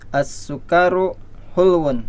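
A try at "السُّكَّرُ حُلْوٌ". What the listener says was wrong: As-sukkaru ya, kafnya jangan dipanjangin.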